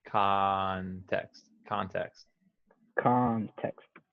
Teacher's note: now the o sounds like ah